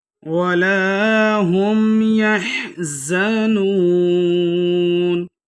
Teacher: آیت ختم ہو رہی ہے، وقف کی صورت میں 4 سے 6 حرکات کھینچ کے پڑھ سکتے ہیں